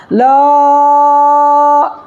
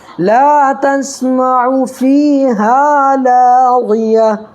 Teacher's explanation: جیسے لا تسمعوا فیہا لاغیہ، ہم لوگ کیا کرتے ہیں کہیں کہیں خوب کھینچ دیتے ہیں، جیسے لا، یہ غلط ہو جائے گا، ایسے نہیں پڑھنا ہے. لا اتنا زیادہ نہیں کھینچنا ہے، یا ایک الف یعنی صرف 1 سیکنڈ کھینچنا ہے. جیسے لا تسمعوا فیہا لاغیہ، ایک سیکنڈ کھینچنا ہے. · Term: الف مدہ